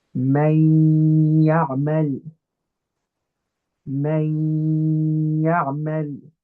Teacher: we're cancelling out the tongue component and we're using the nasal component because it's idgham with ghunna, a nasal component · My tongue isn't going to touch the gums of my teeth, right? Instead, my tongue is going to sit lightly in my mouth and my nose is going to do that vibration for 2 harakat